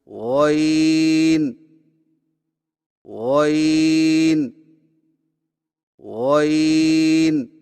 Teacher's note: غین کی ادائیگی میں زبان کی جڑ کو تالو کی طرف بلند کرتے ہوئے موٹی آواز میں پڑھیں